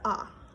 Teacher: Ah being the most open and neutral of all of the vowels